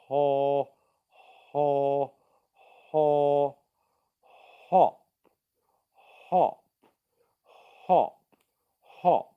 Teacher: hop what i'm doing is i'm saying the word word op i'm starting it with no voicing in my throat and then i'm turning on the voicing as i make it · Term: h sound, the H sound